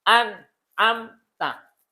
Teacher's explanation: di sini huruf n-nya jelas ini huruf m-nya jelas berarti anamta enggak ada dengung enggak ditahan enggak samar anamta n-nya jelas m-nya jelas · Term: izhar